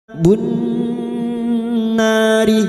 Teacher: na fathah diikuti alif, 2 harokat kita panjangkan mad tabi'i